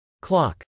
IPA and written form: klˈɑk (clock)